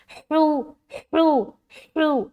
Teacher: ایک ہوا کی سی ظاہر ہوگی، پھر یہ حرف ادا ہوگا